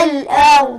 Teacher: الهمز مرقق والراء مفخمة